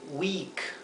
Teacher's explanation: Se pronuncia como una i larga, week. Bien, por eso aquí lo he escrito con doble i en la fonética, en verde.